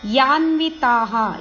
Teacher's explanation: ಯ ಅಕ್ಷರದ ಮೇಲೆ ಆಘಾತ ಇದೆ ನ ಮತ್ತು ವ ಇದು ರಸ್ವ ಇದೆ